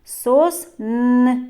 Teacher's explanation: на який склад падає наголос у цьому слові сосни так на перший склад на звук о